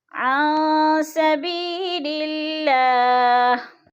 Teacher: عن سبیل اللہ، اور حرف اللہ جو ہے باریک پڑھا جائے گا، اللہ سے پہلے لفظ لام کے نیچے زیر ہے تو اللہ کو باریک کر کے پڑھیں گے